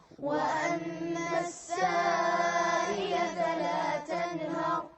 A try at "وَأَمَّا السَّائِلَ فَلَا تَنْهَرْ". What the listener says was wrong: وضح الهمزة وأما السائل فلا تنهر